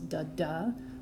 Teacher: It goes da-da with a stronger stress coming on the 2nd syllable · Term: iambic pentameter